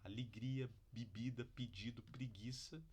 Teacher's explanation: numa fala em cadeada natural informal acabam produzindo uma vogal alta a gente chama esse processo de alçamento vocálico que Estamos alçando levantando a vogal